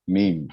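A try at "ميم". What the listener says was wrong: मीम मीम तो नीचे वाला होठ जाके ऊपर वाले होठ को पकड़ रहा समझ रहे मेरी बात आप बा जो बोल रहे हैं आप ऊपर वाला होठ आके नीचे वाले होठ को पकड़ ले रहा जल्दी बा आप जब मीम बोलना हो तो नीचे वाला होठ जाके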